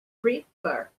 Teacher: Então, porque eu falo prefer, o verbo a stress syllable, tá? A sílaba forte é a última, a sílaba tônica é a última sílaba.